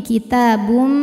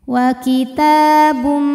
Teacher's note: ada hukum idgham bhunah karena ada tanwin damah menghadapi huruf mim maka tanwinnya masuk ke mim kitabum bunyi m dan tahan dengungkan